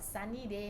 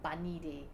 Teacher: they replace the s sound with a b and we call it phonological errors